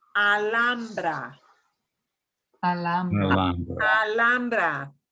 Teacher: the H is right in the middle. So we have to slide through and ignore that.